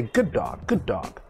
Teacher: but we don't pronounce two ds only one d sound